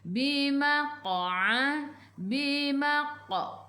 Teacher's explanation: Maqa qalqalah sughra, lantunannya kecil apabila ada huruf qalqalah di tengah-tengah ayat. Atasnya ada baris sukun, kena melantun, lantunannya kecil, qalqalah sughra.